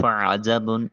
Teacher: عین کو وسط حلق سے ادا کریں گے۔ جب با ساکن ہے قلقلہ واجب ہوگا۔ · فا کی ادائیگی کے وقت سامنے والے دو دانتوں کا کنارہ نیچے والے ہونٹ کے درمیانی حصے پر لگتا ہے۔ عین کو وسط حلق سے ادا کریں گے۔